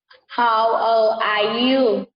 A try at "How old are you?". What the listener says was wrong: How old are you? Con có thể nói lên giọng ở đoạn giữa cho thầy được không? How old are you? Cái giọng của con như này chứ. How old are you?